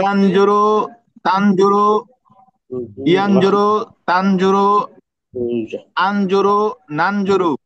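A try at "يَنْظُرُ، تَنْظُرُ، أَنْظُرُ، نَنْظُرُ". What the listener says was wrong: Very good, very good. তাহলে তো সবাই বুঝে ফেলছেন কিভাবে বলতে হবে।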